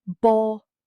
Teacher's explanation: The stress is on the first.